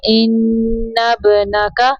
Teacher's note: नून मुशद्दद पे गुन्ना करना है